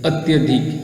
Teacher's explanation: यहाँ का ई और यहाँ पर अ, ई और अ मिलकर य में परिवर्तित हो गया